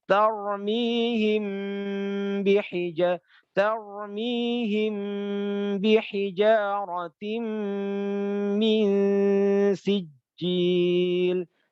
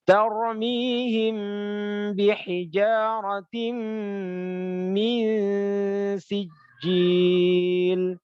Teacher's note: Mim sukun bertemu dengan ba ya. Itu bacaan ikhfa syafawi Mingkem, cara bacanya mingkem, terus dengungnya tiga harokat.